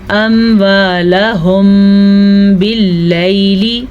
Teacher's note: میم ساکن کے بعد با ہے تو دوبارہ یہاں پہ اخفاء شفوی ہو رہا ہے. دونوں ہونٹوں کو بند کر کے غنہ ادا کر لیجیے گا.